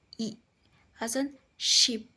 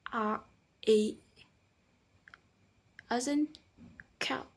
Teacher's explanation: The tongue is very high, whereas from A as in cow, the tongue is lower.